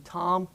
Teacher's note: If you were to crop out the vowel in tom, you will notice that there's a nasal quality to it. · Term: nasal vowel